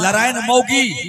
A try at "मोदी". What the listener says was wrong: मोगी नहीं, मोदी।